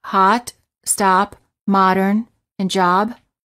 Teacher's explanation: for the ah sound the lips are apart as if you're yawning the lips are not rounded the tongue is relaxed and flat at the bottom of the mouth